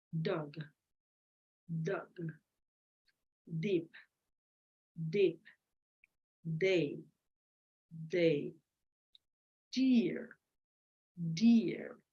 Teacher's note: Then at that moment you feel it's voiced. It's alveolar because you position your tip on your alveolar ridge. It's plosive, which means it stops.